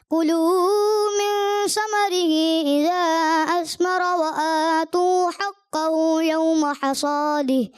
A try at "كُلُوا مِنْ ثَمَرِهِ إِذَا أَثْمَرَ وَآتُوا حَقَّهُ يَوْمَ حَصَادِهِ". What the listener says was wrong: کلو من ثمرہ، سا کی ادائیگی تھوڑی سی متاثر محسوس ہوئی اور صاد کی ادائیگی پر رکھیں.